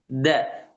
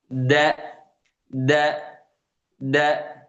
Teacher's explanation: Kalau D yang Indonesia. Tapi huruf dal dia makhrajnya dari ujung lidah ketemunya dengan belakang gigi seri, ya, pangkal gigi seri bagian atas. Da. Jadi kalau misalnya antum melafalkan huruf da ini dalam bahasa Indonesia, dalam perkataan Indonesia, maka akan mungkin terdengarnya seperti cadel gitu.